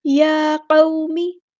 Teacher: زبر ہے تو مد لین کریں گے، نرمی سے موڑیں گے